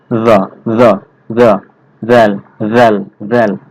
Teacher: জিহ্বার আগা সামনের উপরের দুই দাঁতের আগা সাথে লাগাইয়া নরম ভাবে উচ্চারণ করতে হবে · ফ্যা জেল ফ্যা ইরে ইরে জ নরম ভাবে উচ্চারণ করতে হবে জিহ্বাটা সামনের দাঁতের সঙ্গে লাগবে লাগার পর নরম ভাবে উচ্চারণ হবে